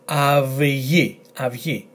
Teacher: this combination is followed by letter gamma, g, and therefore is pronounced av-yi, not af-ti. The letter taf is nowhere here.